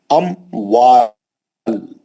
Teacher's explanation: गुना नहीं करेंगे। मीम साकिन के बाद हरफ वाव आया इजहार के साथ पढ़ा जाएगा · اموال, غنہ نہیں کریں گے. میم ساکن کے بعد حرف واو آیا, اظہار کے ساتھ پڑھا جائے گا اموال